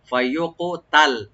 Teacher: ফায়ুকুতাল, ফায়ুকুতাল, ফা ওপেন রাখবেন, আর কাফটাকে এখানে আমরা কলকলা করতে হবে, ইকু করতে হবে